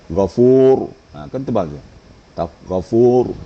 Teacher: harus punya kaidahnya apabila sebelum baris di atas atau baris depan Maka ra itu dibaca tafkhim atau getarannya tafkhim Walaupun dia sukun